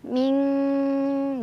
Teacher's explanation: Karena pada dasarnya cara membunyikan ikhfa adalah ketika kita membunyikan nun sukun atau tanwinnya, maka posisi lidah kita sudah ke huruf di depannya. Karena huruf qaf itu jauh sekali dengan nun, yaitu di pangkal lidah, maka ini udah dengung banget, ming. Jadi ya udah jauh ya dari nun. · nun sukun dibaca samar-samar sambil berdengung, di mana tingkat kesamarannya lebih kecil dibandingkan dengungannya. Jadi lebih terdengar dengungannya, ya, lebih ang. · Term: ikhfa ab'ad